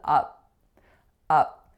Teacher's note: So it's a lax a sound going into a voiceless P.